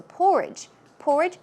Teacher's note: Porridge, stress goes on the first syllable